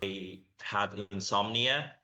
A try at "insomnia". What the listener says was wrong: Insomnia, good.